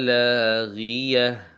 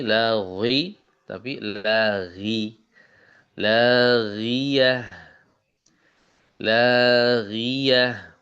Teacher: Di sini ghainnya kasroh, diberi contoh kasroh itu maksudnya untuk ya mencontohkan untuk menampilkan huruf ghain yang tafkhimnya melemah atau hilang